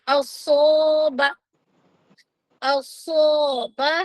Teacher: को भी हम खींचेंगे बा को जल्दी से पढ़ के और स्वाद की अलिफ मोटी होगी हा की लाइट हो जाएगी